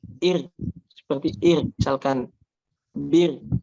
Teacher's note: ketika dia ada ro sukun sebelumnya kasroh, maka dia dibaca tipis ro-nya